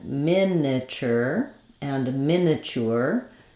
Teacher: we have first syllable stress